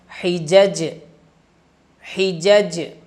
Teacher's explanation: قطب جدن، ان کو کہا جاتا ہے قطب جدن، یہ 5 حروف ہیں، اور ان پر جب جزم آ جاتی ہے، یہ جب ساکن پڑھے جاتے ہیں تو ان کو ہلا کر پڑھتے ہیں، یعنی کہ قلقلہ کرتے ہیں